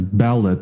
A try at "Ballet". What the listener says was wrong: No, it's pronounced ballet. People dance ballet, the performance art, but not ballot. So it does not rhyme with wallet.